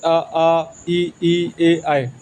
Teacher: जिन स्वरों के उच्चारण में ओठ वृत्तमुखी या गोलाकार नहीं होता है उसे हम अवृतमुखी कहते हैं